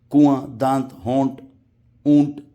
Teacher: نون کو سائلنٹ کرنا ہے، ظاہر نہیں کرنا ہے